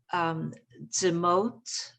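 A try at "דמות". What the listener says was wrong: Moo. This is oo.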